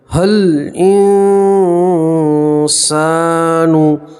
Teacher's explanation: الف اور یہ الف نہیں پڑھیں گے، ہا کو سیدھا لام سے ملائیں گے۔ حل انسان، نون ساکن کا اکفا ہے اس لیے نون ساکن کی آواز کو ناک میں چھپا کر گنہ کے ساتھ پڑھیں گے، اور یہاں پر الف مدہ اس لیے ایک الف کے برابر کھینچیں گے۔